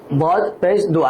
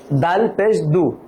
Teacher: জিহ্বার গোড়ার কিনারা উপরের মারির দাঁতের গোড়ার সঙ্গে লাগে